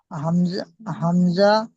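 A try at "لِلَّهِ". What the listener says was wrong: হামজা নয়, হামজার উপরে জাবার জের পেশ কিছু নেই, হামজা বাদ দিয়ে পড়তে হবে।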